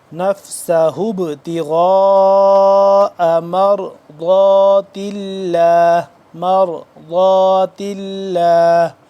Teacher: ضاد کو ادا کرتے وقت زبان کی بائیں کروٹ کو اوپر والی جو داڑھ ہیں ان کے ساتھ ٹچ کریں گے تو ضاد صحیح طرح سے ادا ہوگا۔